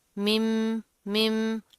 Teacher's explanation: मीम साकिन के बाद क्या है, फिर मीम आ रहा है, तो यहाँ पर हम इदगाम करेंगे। मिम, मिम। आगे फिर मिन, मिन।